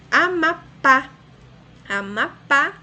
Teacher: Amapá, a sílaba mais forte, de maior intensidade pronunciada, mais forte é pá, a última sílaba, oxítona.